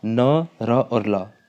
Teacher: न, र और ल, ये 3 हमारे वत्सर्य कहलाते हैं।